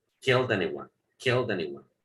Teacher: Pronuncian la D y la unen con la siguiente.